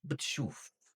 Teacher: like we are wetting the b and the t with a little vowel in the middle